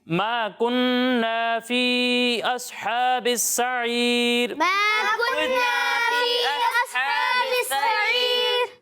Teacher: ما كنا کو ایک الف کے برابر کھینچنا ہے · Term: الف مدہ